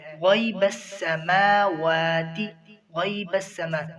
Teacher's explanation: غین کو پر پڑھیں گے, یہ حروف مستعلیہ میں سے ہے.